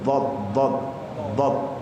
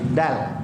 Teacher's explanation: Lidah ini ditempel di gigi pojok bergabung dengan gigi bawah. Dot nempel di gigi pojok. Kalau dal naik sedikit, ujung lidah naik ke pojok dikit.